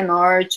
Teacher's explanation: eu tenho R retroflexo né do Norte do Paraná